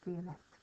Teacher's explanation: we pronounce the T on the end when it's feminine